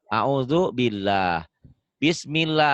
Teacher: Lafaz Allah dibaca tarkik tipis berbunyi Allah bila didahului oleh huruf yang berbaris kasroh